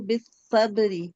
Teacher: وتواصوا بالمرحمة بالصبری پر کیا ہو رہا ہے. بالصبری پر تشدید ہے تو یہاں با کو سواد سے ملا کر پڑھیں گے اور با پر قلقلہ ہو رہا ہے